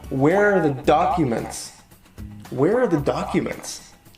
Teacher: with real sentences right so where are the documents right here we have a stress on wear and a stress on the first syllable in the word documents